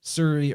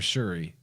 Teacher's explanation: So that S is probably aspirated more like a sh sound.